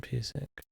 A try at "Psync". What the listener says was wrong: The P is silent. You P-Stink.